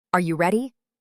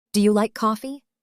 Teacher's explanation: Your voice rises at the end. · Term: rising intonation